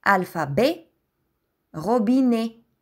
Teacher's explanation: а произнасяме отворен звук е